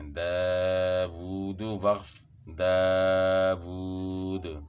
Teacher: جو دال میں آواز جو ہلا کر اس کو پڑھا تو اسی کو قلقلہ کہتے ہیں